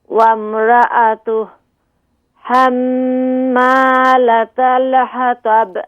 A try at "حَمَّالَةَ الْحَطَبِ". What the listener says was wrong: یہ ہا کو ذرا واضح کیجیے، حمالة الحطب،